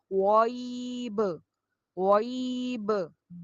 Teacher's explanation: یہ غین کو موٹا کرتے ہوئے آپ نے با کو قلقلہ کرنا ہے